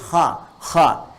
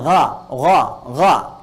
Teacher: bagian pangkal lidah di paling ujung itu menyentuh ke langit-langit. Sehingga ketika dia ke atas, suaranya lebih tebal. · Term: isti'la